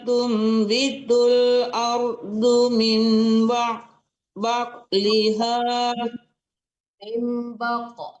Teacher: Itu baru dipantulkan qnya karena huruf qalqalah